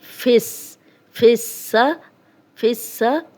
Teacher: اب سین 2 بار پڑھا جا رہا ہے، ایک دفعہ پچھلے زیر کے ساتھ اور ایک دفعہ اپنی حرکت کے ساتھ